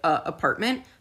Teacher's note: the consonant is a glottal stop so it's that little choked off sound